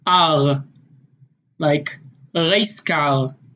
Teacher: Sort of more in the back of your throat, a little bit more guttural. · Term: roll to their R's